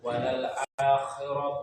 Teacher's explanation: A-nya jangan dibaca o, walal o, tapi walal a tipis. وللآخرة خير لك من الأولى Lamnya pendek.